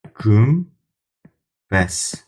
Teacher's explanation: buradakı n samiti çevrildi m-ya